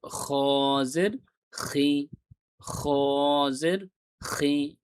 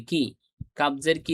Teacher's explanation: খর উচ্চারণটা আমরা যখন গলা পরিষ্কার করার চেষ্টা করি, এ ধরনের একটা সাউন্ড হয়, সেই সাউন্ডটাই আমাদের গলার ভেতর থেকে আনতে হবে।